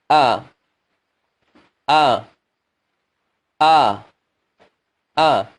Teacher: Makhraj huruf ini berada di pangkal tenggorokan kita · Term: hamzah